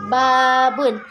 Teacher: ba dihasilkan dengan menempelkan kedua bibir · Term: suara bibir